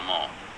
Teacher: for the General British, uh the vowels are longer, more rounded · the person in the clip said more, and the R is barely noticeable.